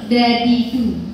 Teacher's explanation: membunyikan huruf dal, tapi lidahnya nempelnya di langit-langit yang bagian tengah